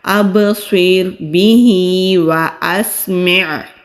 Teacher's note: ہا کے نیچے بھی کھڑی زیر ہے، کھڑی زیر کو ایک الف کے برابر کھینچ کر پڑھتے ہیں۔ اب سویر بھی، اب سویر بھی، واسمع، واو ہونٹ گول کر کے ادا کریں گے۔